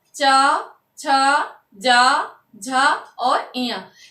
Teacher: ये दंत के ऊपर जो ऊपर का हिस्सा होता है तालु, वहां से उच्चारित होता है चा वर्ग